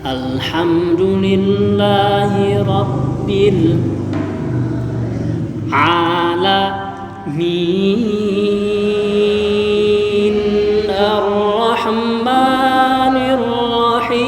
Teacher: Yang ketiga bis alhamdulillah terlalu tinggi. Harusnya alhamdulillah pendek, rendah. Alhamdulillah turun dulu. Alhamdulillah naiknya di alaminnya.